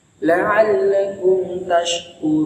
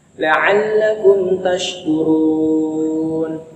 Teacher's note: huruf K tidak boleh lewat hidung, harus lewat tengah-tengah lidah, tempelin ke tengah-tengah langit atas.